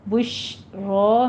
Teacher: شین کی آواز میں تفشی پیدا ہوگی اور رو کو پر پڑھنا ہے